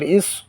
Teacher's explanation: اب یہاں پہ جو میں نے بتایا ہے حمزہ صاد زیر اس، تو یہ حروف صفیریہ میں سے صاد آ گیا اور حروف مستعلیہ میں سے صاد ہے، اس کو موٹا کر کے پڑھیں گے